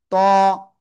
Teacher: জিহ্বার আগা উপরে দুই দাঁতের গোড়ায় লাগাবো, লাগিয়ে একটু মোটা আওয়াজে আমরা এক আলিফটা নিয়ে উচ্চারণ করব। ত।